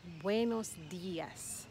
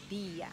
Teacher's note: The emphasis is on the I.